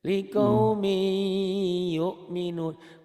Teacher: Oh, ternyata tanwin itu bunyi n. Bunyi n-nya itu masuk ke y, itu diidghamkan